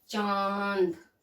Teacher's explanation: तो चंद्र बिंदु में ये, इसमें जब हम उच्चारण करते हैं तो हमारी नाक और मुंह दोनों से हवा निकलती है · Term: अनुनासिक